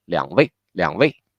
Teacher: since here the third tone is in the first place, so we need to make it a very super light, super quick